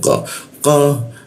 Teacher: siku tenggorokan lidahnya dinaikkan tidak ada hembusan udara ketika membaca huruf qo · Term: huruf qa